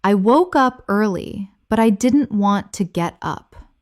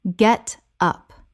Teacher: Feel how the get connects to the up. Get up. It almost becomes one word.